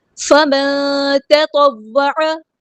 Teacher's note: نون ساکن کی آواز کو یہاں پہ ہم چھپا دیں گے، اخفا ہو رہا ہے